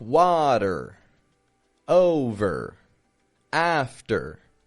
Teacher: I'm not stretching it out like a strong R, but it's a quick, flat, quiet, and fading what we call a schwa R.